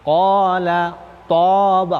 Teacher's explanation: Nah, bacaan qola itu dibaca tebal, tafkhim. Qola, toba huruf isti'la.